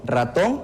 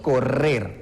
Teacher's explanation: se realiza de una forma corta cuando decimos solo con una R, en este caso del ejemplo ratón, y de una forma más prolongada o más larga si nosotros hablamos correr